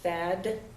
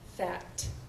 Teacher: so we have fad versus unvoiced fact so the idea is the other articulatory information for that last phoneme is similar but the voicing is what distinguishes the two